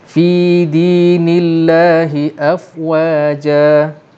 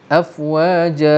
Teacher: Sebab yang panjang lebih 2 tu dia mesti jumpa hamzah ataupun jumpa mati. Tapi di sini hukum mad iwad, dia mengambil kadar bacaan mad asli, iaitu 2 harakat sahaja.